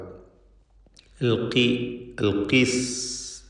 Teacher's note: ഖാഫിന് കസ്റ ആയതുകൊണ്ട് ഏറ്റവും കുറഞ്ഞ ലെവലിലുള്ള തഫ്ഖീമാണ് കൊടുക്കുക